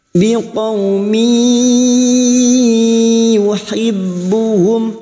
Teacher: Masuk pada huruf berikutnya dan mendengung selama 2 atau 3 harokat. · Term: idgham bi gunnah